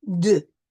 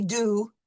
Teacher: we are going to pronounce this U, and it's going to be a more nasal sound